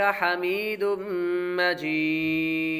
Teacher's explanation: تنوین کے بعد میم حروف یرملون میں سے آ رہا ہے تو غنہ کریں گے اور آخر میں مد ہوگی, مد عارض.